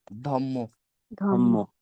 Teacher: এই পরের বর্ণের কারণে আগের বর্ণটাকে আমরা পরিবর্তন করে কি করে দিলাম? সমান করে দিলাম, একই রকম ধম্ম। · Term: পরাগত